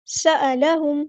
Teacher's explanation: سین کی سیٹی واضح کریں گے